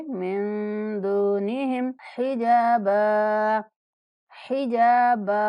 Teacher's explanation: मिन नून पर इख्फा करेंगे, दूनिहिम दाल के बाद वाव मद्दा, दाल को 1 सेकंड तक लंबा करके पढ़ेंगे